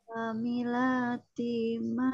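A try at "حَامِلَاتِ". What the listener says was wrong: Nah, masih kurang Bu. Hamilati. Nah, ha-nya kurang panjang.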